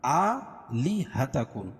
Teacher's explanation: کھڑا زبر قائم مقام الف مدہ کے، اس کو ایک الف کے برابر کھینچ کے پڑھیں گے